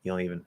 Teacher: You drop the D, make the O nasal, drop the N. So just having that nasal O there, you don't even.